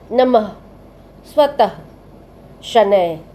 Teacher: इसे विसर्ग कहते हैं। इसका उच्चारण वर्ण के बाद ह की ध्वनि के समान होता है।